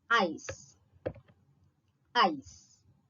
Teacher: the back of the tongue is first raised in the direction of the soft palate